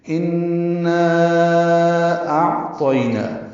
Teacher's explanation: الف مدہ کے بعد دوسرے کلمے میں حمزہ، یہ بھی الف کی شکل میں ہے، آنے کی وجہ سے نا پہ مد آئی ہے۔ اس مد کا نام ہے مد منفصل، چھوٹی مد ہے یہ۔ ہم اس کو 4 حرکات لمبا کرتے ہیں۔